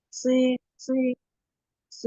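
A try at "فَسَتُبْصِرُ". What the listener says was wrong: Belum? Belum terkepung, coba si. Coba latihan dulu huruf shadnya.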